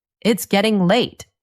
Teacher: The voice goes up on late.